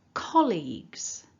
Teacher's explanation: the first syllable is the strongest syllable, and that dot in the middle tells us that the word is broken down into two main parts, two syllables. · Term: stress